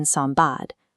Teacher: The underlying sequence contains an alveolar nasal n, followed by a bilabial stop ba. To avoid an articulatory hurdle, the nasal morphs into an m, creating a smooth acoustic transition during rapid speed.